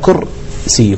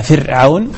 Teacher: فتكون الراء بعد في سكونها وسبقها بالضمة مفخمة، بعكس ما لو قلنا فرعون فإنها مرققة لكسر ما قبلها.